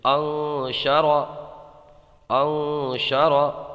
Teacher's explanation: گنہ کر کے ناک میں آواز لے جائیں گے، ایک الف رکیں گے